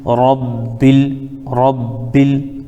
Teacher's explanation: یہاں الف خالی ہے، بیچ بیچ میں کہیں پہ الف یا واو یا لکھی ہوتی ہے لیکن پڑھی نہیں جاتی ہے، تو یہاں پر الف کو ہم پڑھیں گے نہیں، ڈائریکٹ ہم لام میں ملا دیں گے. تو با لام زیر بل، رب بل، رب بل.